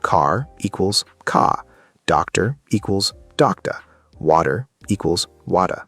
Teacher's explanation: In British English, especially what they call received pronunciation, or RP, the R at the end of words is often silent